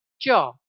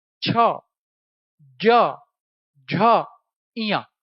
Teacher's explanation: देखो जीभ तालू को छू रही है। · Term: तालव्य